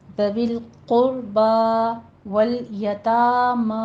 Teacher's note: دونوں جگہ فتح قائمہ ہے، منہ کھول کے ادا کیجیے، 2 کاؤنٹ کرنا ہے